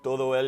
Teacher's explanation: Some of the syllables get compressed, so for instance, like todo el becomes todo el or tol.